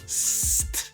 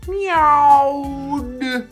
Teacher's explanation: So hissed with a T from up here. St. And meowed with a D from down here.